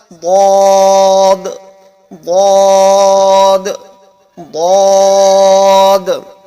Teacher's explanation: کنارہ زبان ڈاڑھ سے مل کر ضاد ادا ہوتا ہے